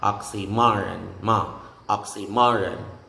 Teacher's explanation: in the word oxymoron, the major stress is assigned to the third syllable, which is ma, oxymoron, ma, oxymoron.